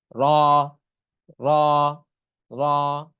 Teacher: মাখরাজ জিহ্বার আগার পিঠ তার বরাবর উপরের তালুর সঙ্গে লাগাইয়া র জিহ্বার আগার পিঠটা উপরের তালুর সঙ্গে লাগিয়ে উচ্চারণ হবে র